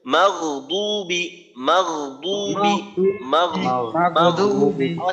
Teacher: মাগদুবি মাগ, এখানে মাগ মাগ আওয়াজ হালকা চালু রাখতে হবে, যেন এখানে মাগ কলকলার মতো না হয়, এক কলকলার মতো না হয়। দ্বিতীয়ত যেন গয়নের উচ্চারণটা মাগদুবি বন্ধ হয়ে না থাকে, আওয়াজটা চালু থাকবে। চালু থাকা অবস্থায় দ্বিতীয় হরফ চালু থাকতে থাকতে দ্বিতীয় হরফের উচ্চারণের সাথে আওয়াজটা যুক্ত থাকবে, মাঝে আওয়াজ বন্ধ হওয়ার কোনো সময় পাওয়া যাবে না। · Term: আওয়াজ চালু রেখে